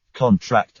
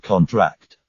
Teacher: stress on the first syllable is a noun stress on the last syllable is a verb